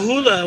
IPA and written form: ˈhuːlə (Hula)